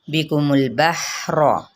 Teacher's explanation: मीम की पेच को लाम के साथ मिलाएंगे, लाम को हिलाना नहीं